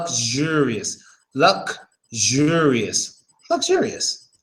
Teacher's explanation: But see, the thing is, when you actually pronounce luxure, the X before the U becomes a Z, similar to the Z you have in Russian